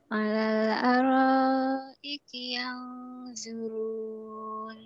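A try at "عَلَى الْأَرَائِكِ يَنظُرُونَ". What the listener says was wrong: Rohnya panjangin. Alal araiki yanzurun. Alal. Kurang panjang benernya. Alal araiki yanzurun. Bukan zuru, zu. Ujung lidahnya dikit digigit, kemudian tebalkan. Zuru. Jangan kurang matnya, panjang.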